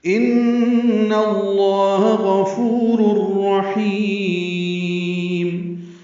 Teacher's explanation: ان میں نون مشدد پہ غنہ ہے